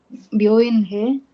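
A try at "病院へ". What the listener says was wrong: ಹೇ ಅಲ್ಲ, ಇದು ಎ ಎ ಎ ಹಾಂ, ಎ ಅಲ್ಲ.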